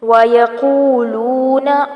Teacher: قو اور لو مد اصلی بالواو ہو رہی ہے، متا مد اصلی بالالف کا قائم مقام، تھوڑا سا کھینچیں گے۔